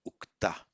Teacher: It's ukta, and the reason it is ukta, not vakta, is that in Vedic it was stressed on the last syllable ukta, and so the va being an unstressed syllable before a stressed syllable mutates to u